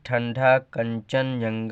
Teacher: अनुस्वार के उच्चारण में वायु नाक से निकलती है और उच्चारण झटके के साथ होता है, जैसे ठंडा, कंचन, जंगल इत्यादि।